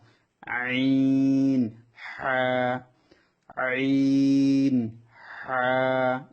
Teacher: হলকের মধ্যখান হতে আইন হা। আইন হা, কণ্ঠটা দিয়ে চিকন সুরে উচ্চারণ হবে। কণ্ঠ মাঝখান থেকে কণ্ঠটা দিয়ে চিকন সুরে উচ্চারণ হবে এই অক্ষরগুলা।